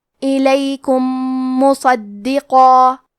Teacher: یہاں حکم ہے ادغام متماثلین صغیر، تو ہم پہلے میم کو دوسرے میم میں ملا کے ایک ہی میم غنہ اور تشدید کے ساتھ پڑھیں گے